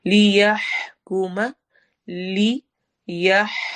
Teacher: ہا کی آواز کو حلق میں ٹھہرانا ہے